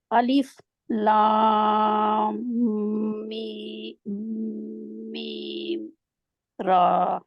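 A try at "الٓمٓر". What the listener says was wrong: अलिफ लाम मीम रा। मीम भी लंबा होगा। लाम इतना लंबा नहीं का करना, लेकिन लाम के आगे मीम को जरूर मिलाना है, क्योंकि लाम में अपनी मीम जो है अलिफ लाम मीम रा।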